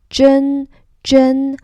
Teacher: The first tone flat. Zhen Zhen. So for the ZH sound, it's kind of like the J, but thicker.